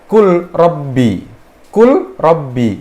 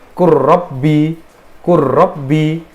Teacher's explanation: Karena mereka itu mutajanisain, satu makhraj beda sifat, maka lamnya itu hilang, kemudian langsung dimasukkan ke huruf ro. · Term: idgham